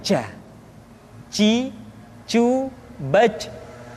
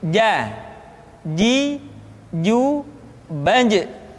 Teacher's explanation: dia tidak boleh mengalir nafas karena sifatnya al-jahr, lawan dari al-hamas.